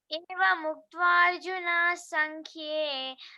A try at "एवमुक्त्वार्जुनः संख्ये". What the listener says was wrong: నాకు దీర్ఘం లేదు ఇక్కడ. నాకు దీర్ఘం లేదు. ఏవ ముక్త్వార్జున సంఖ్యే అని ఆ విసర్గం ఎగిరిపోయేటట్టు సాకు సావత్ ఇచ్చినట్టు ఆ రెండు. ఏవ ముక్త్వార్జున సంఖ్యే అట్లా. నాకు దీర్ఘం లేదు. కొంచెం నాకు దీర్ఘం వచ్చినట్టుగా వినిపిస్తుంది. నువ్వు చెప్పినావో లేదు నాకు తెలియదు. మాకు వినిపించేటట్టు వినిపిస్తుంది. ఏవ ముక్త్వార్జున సంఖ్యే ఆ సాకు సావత్ ఇచ్చినట్టుగా చెప్పులా.